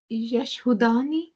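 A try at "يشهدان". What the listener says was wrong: यशहदानी, यशहदानी, ये हरकत नहीं चेंज होंगे, ये वाले हरकत नहीं चेंज होंगे, ठीक है?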